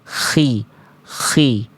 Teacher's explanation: Kalau K itu karakter nafasnya masih kayak ada keresek-kereseknya, masih ada kasar-kasarnya. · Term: huruf ko khi